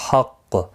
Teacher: یہاں پر قاف کے اوپر سختی کے ساتھ قلقلہ ہوگا وقف کی صورت میں